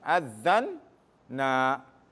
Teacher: when you have two noons coming together, what you can do, or what you should do, you make it into a shadda